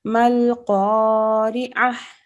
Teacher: This ta marbuta turns into a ha sakina when we stop